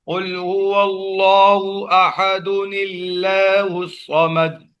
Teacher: اللہ کا حمزہ گر جاتا ہے